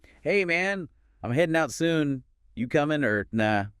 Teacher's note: Did you notice the dropped G sound at the end of headin' and comin'? That's super common in informal American English.